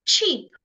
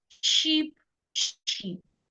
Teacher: you want to release the sound suddenly unlike the sh sound where you need to release the sound slowly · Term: CH sound